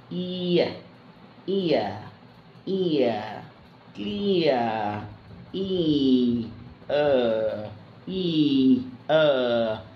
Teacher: first sound நல்லா மேல போய் செகண்ட் சவுண்ட் அப்படியே கிளைடிங்கா அப்படியே அந்த சருக்கு மருந்து மேல ஏறி அப்படியே நீங்க சருக்கி வர்ற மாதிரியே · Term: வவ்வல் கிளைட்